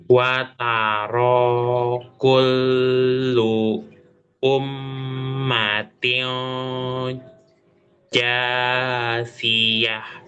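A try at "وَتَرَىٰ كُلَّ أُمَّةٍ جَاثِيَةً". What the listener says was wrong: Kullunya nggak ada kullu dan di kullu itu nggak ada. Itu fathah. Coba fathah.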